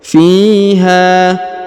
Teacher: huruf ha dipanjangkan dua harakat karena di depannya terdapat Alif